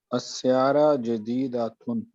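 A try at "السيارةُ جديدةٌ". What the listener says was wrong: حرکت آپ لوگ پوری نہیں پڑھتے. حرکت پوری نہیں پڑھیں گے تو کبھی بھی ڈیفائن نہیں کر سکیں گے آپ کیا کہہ رہے ہیں.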